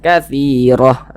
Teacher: huruf ra dibaca tebal. Katsirah, sehingga pangkalisan kita naik terangkat ke atas. Naik terangkat ke atas dia huruf ra-nya ditebalkan. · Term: dibaca tabkhim